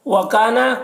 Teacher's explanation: کاف میں الف مدہ ہے، اسے ایک الف کے برابر کھینچیں گے